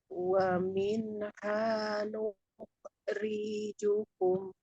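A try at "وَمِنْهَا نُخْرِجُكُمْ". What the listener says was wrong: Ri-nya kepanjangan. Ri-nya kepanjangan Bu. Riju, tapi riju.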